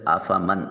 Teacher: فا کی ادائیگی کے وقت سامنے والے دو دانتوں کا کنارہ نیچے والے ہونٹ کے درمیان سے ملے تو فا ادا ہوگا